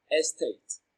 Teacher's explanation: Tate receives the stress. It is pronounced louder and longer.